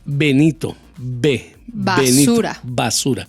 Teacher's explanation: la B si tú la dices al principio va a sonar dura como B Benito B Benito basura basura pero si la B